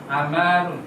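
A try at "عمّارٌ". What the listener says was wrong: Ada sasinya di mim. Ammarun.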